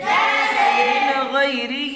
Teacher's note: اب نون کی مثال دیکھ لیں، من غیرہ، نون ساکن کے بعد حروف حلقی کے 6 حرفوں میں سے غین آیا ہوا ہے، اس لیے نون ساکن کی آواز کو ظاہر کر کے بلا غنہ کے جلد پڑھیں گے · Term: اظہار حلقی